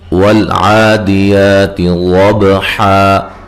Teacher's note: واو کو ادا کرتے ہوئے دونوں ہونٹوں کو گول کرنا ہے، عین کو واضح نکالنا ہے، اور یہ کھڑی زبر ہے۔